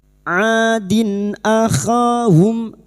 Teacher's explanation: Maka bunyi kasrat tanwin dibaca jelas tanpa mendengung. Nun sukun atau tanwin yang bertemu dengan enam huruf ini maka bunyi kasrar tanwin dibaca jelas tanpa mendengung termasuk huruf hamzah. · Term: idhar halqi